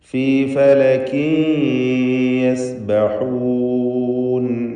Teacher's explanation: കുല്ലുൻ ഫീ ഫലകിൻ യസ്ബഹൂൻ. ഫലകിൻ എന്നതിലെ തൻവീനിന് ഇദ്ഗാം ബിഗുന്ന നാഖിസ് നൽകി യായിലേക്ക് തൻവീനിനെ ലയിപ്പിച്ച് മണിച്ചുകൊണ്ട് ഉച്ചരിക്കണം